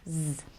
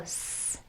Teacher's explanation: z you do everything the same as s but you turn on your vocal chords